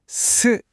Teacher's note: 공기가 부딪히면서 나는 소리. 그 뾰족한 치아의 모양이 느껴지시죠? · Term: 바람 소리